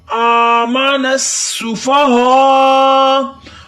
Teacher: کما آمن السفہاء، آ کو ایک الف کے برابر لمبا کریں گے، آمن، سین کو سیٹی کی آواز دیں گے